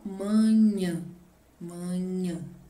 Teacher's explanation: E no grau normal, manhã, manhã, tá? Então, é a última sílaba onde está acentuado ali com o til, que é a mais forte.